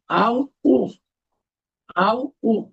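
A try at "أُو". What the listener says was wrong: না, এটা একটু টান হবে, উ।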